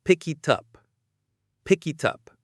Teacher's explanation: Up starts with a. So we link everything. It sounds like one long word.